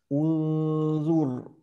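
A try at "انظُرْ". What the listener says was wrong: Masih terlalu tipis. Ya, jadi sifat itbaq itu selain tadi istilah bagian pangkalnya dia naik, tengah-tengahnya agak rapat ke langit-langit bagian tengah. Nah, memang perlu latihan untuk yang tipisnya. Jadi ibarat harus tersenyum terus setiap saat ketika bertemu dengan fathah.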